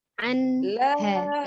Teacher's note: An, nun sukun bertemu dengan hanya, hukumnya izhar, dibacanya jelas ya. Tidak dipantulkan nunnya, ditahan. Anha ya, jadi ujung lidahnya ditahan.